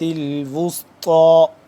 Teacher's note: وسطى تا سے جدا کر کے پڑھیں گے اور طا موٹا کر کے پڑھیں گے